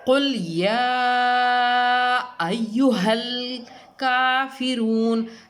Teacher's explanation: اس کو ہم 3 سے 4 الف کی مقدار میں لمبا کر کے یعنی کھینچ کے پڑھیں گے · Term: مد منفصل